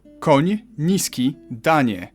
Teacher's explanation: You start with an N and soften it to ni.